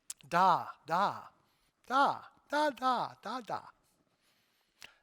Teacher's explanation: the baby decides to experiment with the voiced dental consonant